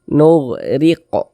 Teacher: huruf ro kalau dia memiliki harakat kasrah maka huruf ro dibaca tarqik Dibaca tipis tipiskan huruf rnya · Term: tarkik